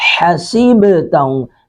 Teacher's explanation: سب سین پر سیٹی کی آواز آئے گی، با پر قلقلہ کریں گے، با ساکن پر قلقلہ کریں گے. حسبتہم، حا کو ہم نے حلق سے ادا کیا ہے حسبتہم حسبتہم.